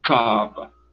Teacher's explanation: Quando você vai dizer, segundo a pronúncia que eles esperam que seja feita, Kaaba, o som no C começa, vamos dizer, nessa região, enquanto no Kaaba começa aqui. A obstrução vem quase que ali na glota, nas cordas vocais, fazendo o impedimento.